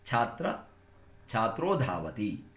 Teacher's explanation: ಛಾತ್ರ ಅ ಉ ಸೇರಿದರೆ ಓ ಆಗುತ್ತೆ. ಸೊ ಛಾತ್ರೋ ಅಂತ ಆಯ್ತು.